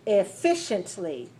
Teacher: four syllable stress the second